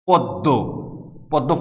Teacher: ময়ের উচ্চারণ নাই, কিন্তু দ দুইবার উচ্চারিত হয়েছে।